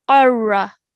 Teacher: qaf is a thick and heavy sounding letter. So make sure you say that with a thick and heavy sound.